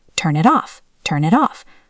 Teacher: Here we have two links. The N in turn links to it. The T in it links to off.